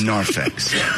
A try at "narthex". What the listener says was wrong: No, TH, fool. Narthex.